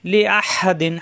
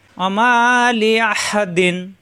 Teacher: তানবিনের পরে আসছে আইন ইজার হবে স্পষ্ট হবে কোনো গুণ্য হবে না লি আহা দিন হা কণ্ঠনালিতে সব দিয়ে অমা লি আহা দিন